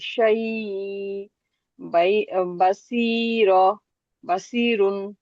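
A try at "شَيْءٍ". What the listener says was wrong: আচ্ছা, এখানে ইন্নাহু বিকুল্লি শাই ইম, একটা মিম আছে না, শাই ইম।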